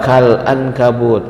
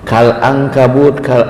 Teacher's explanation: itu ikhfa, nun ketemu kaf dengung